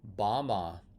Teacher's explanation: Sometimes the word banima gets truncated, and you'll hear bama as a short form of banima.